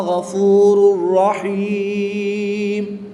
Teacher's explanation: تنوین کے بعد را حروف یرملون میں سے ہے تو یہاں پر ادغام مال غنہ ہوگا یعنی کہ بغیر غنہ کے ادغام کریں گے۔ یا ساکن سے پہلے حرف کے نیچے زیر ہے تو یہاں پر یا مدہ ہوگا، وقف کی حالت میں تنوین کو ساکن کر دیں گے اور جب یہ میم ساکن ہو جائے گی تو یہاں پر وقف کی حالت میں مد عارض ہوگی، 2 سے 3 الف تک کھینچ کر پڑھیں گے۔